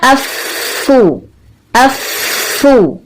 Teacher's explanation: ہونٹوں کو اچھا سا گول کر کے پیش کی آواز نکالی،